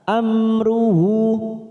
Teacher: mim sukun bertemu ro idhar safawi kita baca jelas